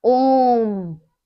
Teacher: जैसे प्लुत स्वर लगाया जाता है, जैसे क्या हो गया, ओम। जब ओम को हम उच्चारित करते हैं तो क्या है, बहुत देर तक खींचते हैं ना, ओम। तो ये जो बीच में है, ओम के जो बीच में है, ओम के जो बीच में है, ये इससे हमें पता चलता है कि ये प्लुत स्वर है या त्रिमात्रिक स्वर है।